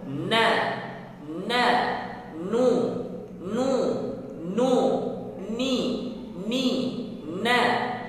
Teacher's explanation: তো নুন তাসকিন যুক্ত হোক, মুতাহাররিক হোক, সাকিন হোক, সর্বাবস্থায় নুনের মাঝে সামান্য পরিমাণ গুন্না হবে, কেননা নুনের মাখরাজের মধ্যেই গুন্না রয়েছে। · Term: নুনের জাতি গুন্না